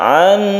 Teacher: kita panjangkan nun bertemu dengan nun yang kita sebut dengan idgham mutamatsilain